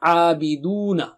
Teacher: Abiduna. Mad is there and oo. Make your lips round.